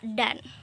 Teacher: bunyi vokal di tengah A ini merupakan puncak kenyaringan dari kata dan ini gitu. Karena ia termasuk ke dalam bunyi vokal, sedangkan D dan N merupakan bunyi konsonan.